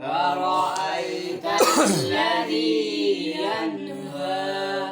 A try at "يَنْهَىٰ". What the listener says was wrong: ين पे गुना नहीं होता, ينهى.